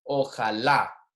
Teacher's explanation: Notice that the word with the accent mark here, the pronunciation is on the accent, the last syllable there